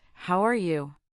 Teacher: We often say it with a slight rise at the end.